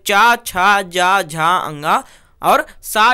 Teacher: वे व्यंजन जिनका उच्चारण जीव के अग्रभाग कठोर तालु को स्पर्श करता है तालव व्यंजन कहलाते हैं